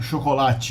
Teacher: Brazilians don't like these hard sounds, consonants in the end, so they add a vowel, I